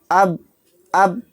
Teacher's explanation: اس میں قلقلہ ہی نہیں ہو رہا، کیونکہ با کا مخرج ٹکر کھا کر الگ ہی نہیں ہو رہا ہے